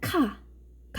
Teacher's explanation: 입천장의 좀 더 여린 부분, 뒷부분에서 혀가 닿았다가 나는 소리예요. 우리는 잘 느낄 수는 없을지 몰라도 이 부분의 기류가 같이 통과되면서 나는 소리예요. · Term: 여린 입천장 소리